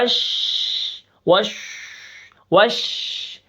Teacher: زبان کی جڑ سے لے کر دانتوں تک آواز منہ کے اندر پھیل جاتی ہے اس شین کو ادا کرتے وقت · شین کی آواز منہ کے اندر پھیلے گی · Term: تفشی